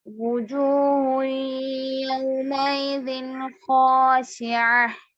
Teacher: خا حروف مستعلیہ میں سے موٹا پڑی